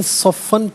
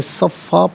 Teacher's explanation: ناظرین صفن پڑھیں گے، وقف کی صورت میں صفا پڑھا جائے گا، فا پر دو زبر کی تنوین وقف میں الف سے چینج ہو جائے گی